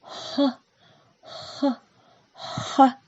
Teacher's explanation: Звук «х». Когда мы его произносим, воздух быстро выходит из горла, не встречая никаких преград. Представьте, что вы дышите на снежинку, чтобы она растаяла.